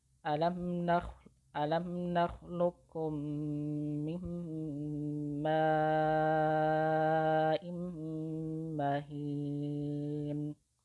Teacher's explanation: qaf itu langsung terbaca kaf tanpa suara tebal atau tafkhim dan tanpa suara qalqalah sedikit pun. Sifat isti'la yang menimbulkan suara pantulan ini jadi hilang atau tidak ada, dan ini adalah bacaan yang paling mudah gitu. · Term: idgham